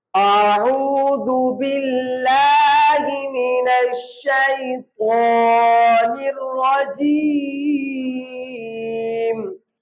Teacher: یہاں را کے اوپر زبر ہے، را کو موٹا پڑھیں گے